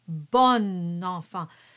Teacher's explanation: It is bon. But when you do the liaison, the on sound turns into on, bon enfant. So the O turns into an open O.